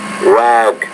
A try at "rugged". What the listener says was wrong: When you say the word, it's rugged. ED at the end. You have to create a new syllable there. So rugged, rugged.